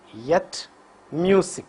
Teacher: Vocal cords vibrate for this consonant. So, ya is voiced palatal semivowel.